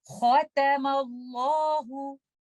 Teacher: लेकिन लेटर ता इस्तेला का लेटर नहीं है, तो लेटर ता को हमने लाइट पढ़ना है और खौ को हैवी पढ़ना है